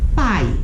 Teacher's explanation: o A é a vogal, o I é semivogal. Agora é um ditongo decrescente.